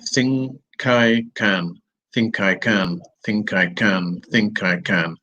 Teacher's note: the consonant has moved on it's joined with the vowel